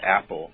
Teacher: the consonant that begins before the short a of Apple is called the glottal stop